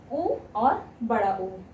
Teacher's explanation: तो ओष्ठ से उ और उ, छोटा उ और बड़ा उ। जब उ बोलेंगे तो आप अपने ओठों को आगे की तरफ थोड़ा सा करते हैं, तब आपके होंठ से ध्वनि निकलती है, उ और बड़ा उ।